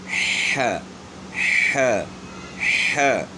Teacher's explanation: ہا گلے کے درمیان سے. تو گلے کا درمیان بھی ان کو بچوں کو بتانا ہے کہ یہ جو ہڈی سی نکلی ہوئی ہے گلے کا درمیان ہے, یہاں سے آپ نے ہا کی آواز نکالی.